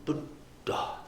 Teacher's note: Like some Thai monks, when they're giving Dhamma talk, Buddha. I mean, there's like almost a whole extra stop in there between the first D and the aspirated D, to give it real honor.